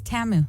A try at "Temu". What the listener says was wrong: Temu. Well, it's an E, not an A.